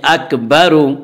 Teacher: جلدی پڑھیں، تھوڑا بھی نہ کھینچیں، اک با، را پیش رو، را کے اوپر پیش ہے، پیش کو جلدی پڑھیں، تھوڑا بھی نہ کھینچیں، معروف پڑھیں، مجہول آواز سے بچیں